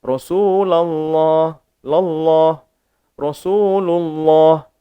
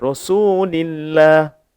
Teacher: untuk baris atas dan juga baris hadapan, dibaca kalimah Allah tu, lafzul jalalah, dibaca dengan tebal.